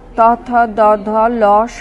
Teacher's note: দ ধ ল স দ দন্ত ব্যঞ্জন জিহমার সম্মুখ প্রান্ত বা জিহবা শিখর ওপরের দন্তপংক্তিতে শ্বাসবায়ু নির্গমনে বাধা দেওয়ায় দন্ত ব্যঞ্জন ধ্বনি গুলি উচ্চারিত হয়